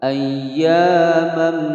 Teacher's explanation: Ayyamam masuk dengan dengung, ada fathatain bertemu dengan huruf mim, hukum bacaan idgham bi gunnah, masuk dengan didengungkan. Mam, dengungannya selama dua ketukan ya.